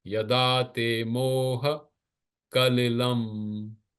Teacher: So ka and la short. Lam anuswar longer.